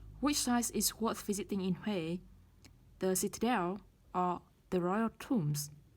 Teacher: Lựa chọn đầu tiên chúng ta sẽ đưa lên rising intonation. Lựa chọn tiếp theo sẽ là falling intonation.